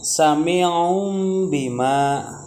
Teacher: di situ ada tanwin bertemu dengan huruf ba, ya, enggak boleh dibaca jelas tapi harus mendengung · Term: iqlab